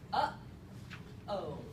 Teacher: we spell this with an H, but it's not a huh. It's not, we're not pushing any air out. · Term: glottal stop